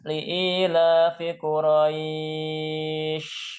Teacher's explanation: Shinnya bukan yang tipis, yang tebal.